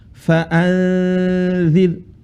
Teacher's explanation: Menyamarkan suara nun. Jadi nunnya tidak jelas, bukan n, bukan n yang murni, tapi n yang tidak jelas. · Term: ikhfa